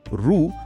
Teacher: आपण उच्चारताना जीभ थोडी वळते पण तो थेट बाहेर पडणारा एक अखंड ध्वनी आहे